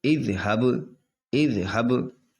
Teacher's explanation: یہ با حرف قلقلہ میں سے تو با میں لوٹتی ہوئی آواز نکلے گی